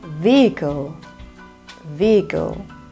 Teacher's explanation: the H here is a silent sound